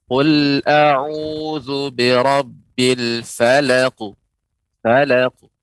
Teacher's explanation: Qalqalanya dia cepat dan sebagai pantulan.